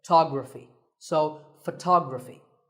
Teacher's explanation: We say photograph, but photography. So the first syllable becomes ph, and the stress goes to the second syllable